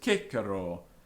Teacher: traditionally the first syllable in Kiko would be stressed